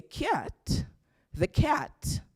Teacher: But if you go to Britain and say cat, the cat, they will right away know that, it's another English that you are speaking, because the cat is palatalized, what we say, the palatalization of the C, which is a feature of standard Jamaican English